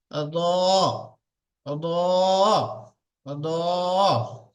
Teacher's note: দেখেন, র উচ্চারিত হয় জিহ্বার উল্টা পিঠ এবং তার বারবার উপরের তালুর সাথে লাগিয়ে উচ্চারিত হয় র। এটা হলো জিহ্বা, এই জিহ্বার উল্টা পিঠ, মানে আগার উল্টা পিঠটা র। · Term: রয়ের মাখরাজ